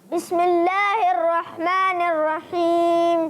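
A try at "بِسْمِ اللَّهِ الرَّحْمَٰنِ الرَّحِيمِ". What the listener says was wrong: جی ماشاءاللہ۔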